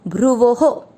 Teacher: भ्रू का अर्थ हुआ भ आधा और र पूरा, इस पर ऊ की मात्रा लगी, भ्रुवो। ओ की मात्रा इसलिए विसर्ग को पढ़ेंगे हो, भ्रुवो हो।